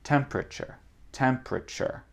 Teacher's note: Normalement, on saute le E là. Temperature, c'est possible, mais on saute quand on parle très vite.